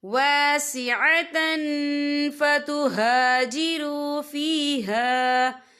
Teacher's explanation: تنوین کی آواز کو ناک میں چھپائیں گے